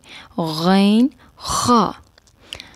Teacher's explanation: ادنا حلق سے غین اور خا ادا ہوتے ہیں